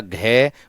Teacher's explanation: कंठीय व्यंजन किस किस से उच्चारित होंगे, कंठ और जीभ, कंठ और जीभ का निचला हिस्सा